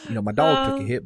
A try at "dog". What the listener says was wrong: I love a good, there's an extra vowel in there. It's not, there's an A, dog.